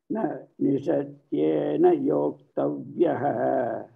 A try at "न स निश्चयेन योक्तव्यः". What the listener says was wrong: स निश्चयेन योक्तव्यः first word is स नॉट न स निश्चयेन योक्तव्यः